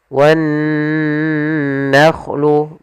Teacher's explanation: Kemudian pada lafal nun bertasydid di sini ada bacaan gunnah, yaitu adanya nun bertasydid. Cara membacanya ditahan dulu suaranya wan nakhlu, baru dilanjutkan ke gunnahnya